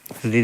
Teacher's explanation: तो ऋ का जो है उच्चारण स्थान होगा मूर्धा